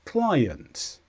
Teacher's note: client is a noun and the stress is on CLI